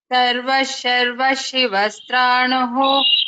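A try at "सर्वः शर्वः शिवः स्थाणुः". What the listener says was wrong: I heard a little rakara in sthanuhu. Stranuhu I heard. Not sure you pronounce that way or not. Sarva Sharva Shivasthanuhu. There is no rakara there.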